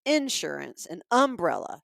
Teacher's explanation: So the syllables that we use in the South, sometimes we put the emphasis on the first syllable